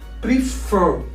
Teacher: The stress is on the last syllable.